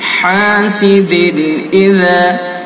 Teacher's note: حاسد اذا، اس کے اندر اظہار کریں گے. دال کے نیچے تنوین ہے، تنوین کے بعد یہ حمزہ ہے حروف حلقی میں سے، تو اس کے اندر اظہار حلقی ہوگا